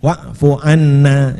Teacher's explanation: jadi yang ditekan pada dengungnya